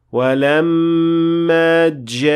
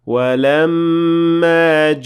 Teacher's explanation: make sure that the G sound is a plosive sound and that it is not a fricative sound